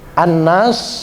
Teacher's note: an-nas itu dibaca gunnah dengung setiap Nun dan mim yang bertasydid Nun dan mim yang bertasydid itu dibaca hunnah jadi agak ditahan begitu